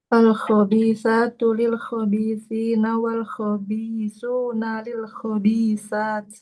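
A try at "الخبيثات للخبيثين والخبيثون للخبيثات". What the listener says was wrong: Lebih dijelaskan lagi kha-nya. Kha-nya tebal. Al-khabithatu.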